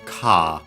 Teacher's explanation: The longer vowel because Japanese doesn't have the R sounds, so simply has a longer vowel like English varieties without those sounds. So the typical example, car, which is car.